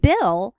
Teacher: when we form the B sound our mouth is already starting to change shape in anticipation for the e sound in Bill and the O sound in ball